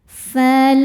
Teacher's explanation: Lam jalalah dibunyikan secara tarqiq sebab harokat sebelumnya kasroh. Cara baca lamnya ini adalah dibaca dengan tipis.